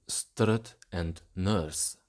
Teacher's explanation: The short U in strut and nurse become a schwa